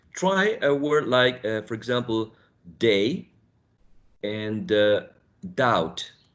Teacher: When we produce t, d, and n, the tongue tip, or the tip of the tongue, right, is raised and touches the alveolar ridge.